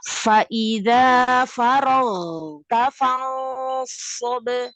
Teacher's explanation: Jadi hurufnya sesuai dengan makhrajnya sama-sama di atas tenggorokan, tapi yang membedakan yang ghoin itu jahar, yang kho itu adalah rokhawah. Hanya mengalir suara untuk huruf ghoin, tidak mengalir nafas.